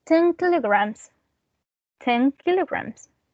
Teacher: when we have an N that's followed by a K or a G, it's not pronounced as an N anymore, it's pronounced as an ng. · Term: regressive assimilation